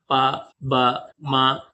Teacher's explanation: తేలికగా ఒత్తు లేకుండా పలికే అక్షరాలు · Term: అల్ప ప్రాణులు